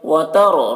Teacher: रा को पूर पढ़ेंगे, रा साकिना से पहले ज़बर है।